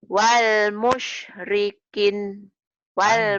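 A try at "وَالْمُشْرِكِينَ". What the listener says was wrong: Panjang. Wal musyrikin. Alif dianggap tidak ada.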